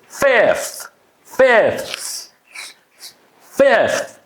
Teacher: TH at the end is unvoiced.